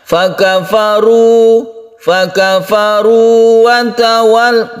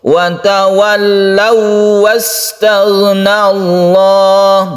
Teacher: Jadi kita tekan ke wawnya, tapi tidak berdengung, karena sifat waw itu tidak berdengung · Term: idgham mutamatsilan